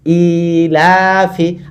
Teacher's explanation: ই লা ফি, তাহলে আলিফ খারাজের, এটা হলো ইয়া মাদের মতো, তাহলে 2 হারাকাত টান দিব। ই লাতেও 2 হারাকাত দিচ্ছি, কারণ খাড়া জবর আছে